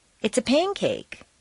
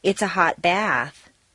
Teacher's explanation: an adjective and a noun make a descriptive phrase and the second word is stressed · two nouns make a compound noun or set phrase and the first word is stressed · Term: set phrases